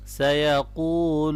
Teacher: سیقول قاف کو موٹا پڑھیں گے، واو کو مدہ ہے، اس کو لمبا کرنا ہے۔ سیقول، اور جب اس کو ملائیں گے آگے سین کے اوپر شد ہے تو سیقول السفہاء۔